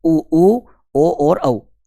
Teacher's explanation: वे स्वर जिनके उच्चारण में ओष्ठ गोल हो जाते हैं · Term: वृत्तमुखी स्वर